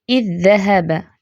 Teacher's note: دال کی مثال دیکھیں، اذ ذهب، ٹھیک ہے، لکھنے کا طریقہ یہ ہے، پہلا دال ساکن ہے، دوسرا متحرک ہے، لیکن ہم پڑھتے کیسے، ایک ہی دفعہ دال پروناؤنس ہوتا ہے